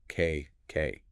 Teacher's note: A quick closure and then a release of air. K. It's sharper. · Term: K sound